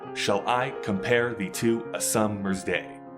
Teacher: iambic pentameter, where it's unstressed and then stressed, which comes across as la-boom, la-boom, la-boom, la-boom.